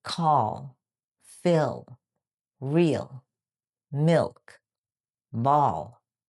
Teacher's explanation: the dark L at the end of words or before consonants. It has a heavier, deeper, sometimes like a W or a sound, like in the word call, fill, real, milk, ball.